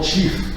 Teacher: en anglais encore, on prononce avec ce tché palatal, mais plus dur par rapport à ce qu'il y a en français moderne